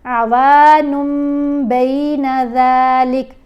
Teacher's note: جب ہم پڑھتے ہیں نا عوانن تو ن کی آواز ہے وہ تنوین کی نون ہے، اس کو ہم نے میم سے بدلنا ہے تو یہ قلب کہلائے گا